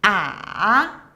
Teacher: Third tone, ǎ, go down and then up higher, like when you feel shocked you will ask people really?